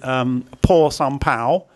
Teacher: the initial consonant, which is a por sam pao, which is an aspirated P. Now, for some reason, in other words, I see this consonant transliterated as BH, which is also wrong.